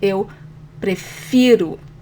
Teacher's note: I say eu prefiro with the emphasis on the fi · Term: stronger syllable